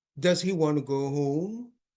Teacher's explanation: they could help their listener uh get a better idea of what they're asking if they produce this uh rising intonation